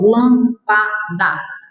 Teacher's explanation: Ela é proparoxítona, a justificativa para ela ser acentuada é isso, ela é proparoxítona, tem antepenúltima sílaba tônica